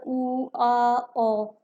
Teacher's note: ਹੁਣ ਪਿਛਲੇਰੇ ਸਵਰਾਂ ਵਿੱਚ ਆਪਣਾ ਜਿਹੜਾ ਪਿਛਲਾ, ਜਿੱਥੇ ਆਪਣਾ ਤਾਲੂਆ ਲੱਗਦਾ ਹੁੰਦਾ ਉੱਪਰ, ਉਹ ਵਾਲਾ ਹਿੱਸਾ ਜਿਹੜਾ ਇਹ ਕਾਰਜ ਕਰਦਾ ਵਾ, ਨਾ ਹੀ ਅਗਲਾ ਕਰਦਾ ਵਾ ਤੇ ਨਾ ਹੀ ਵਿਚਕਾਰਲਾ ਕਰਦਾ ਹੈ। ਠੀਕ ਹੈ, ਜਿਨ੍ਹਾਂ ਦੇ ਉਚਾਰਨ ਸਮੇਂ ਜੀਭ ਦਾ ਪਿਛਲਾ ਹਿੱਸਾ ਕਾਰਜਸ਼ੀਲ ਹੁੰਦਾ ਹੈ ਅਤੇ ਜੋ ਧੁਨੀਆਂ ਮੂੰਹ ਕੋਲ ਪਿਛਲੇ ਹਿੱਸੇ ਵਿੱਚ ਉਚਾਰੀਆਂ ਜਾਂਦੀਆਂ ਹਨ ਉਹਨਾਂ ਨੂੰ ਪਿਛਲੇਰੇ ਸਵਰ ਕਿਹਾ ਜਾਂਦਾ ਹੈ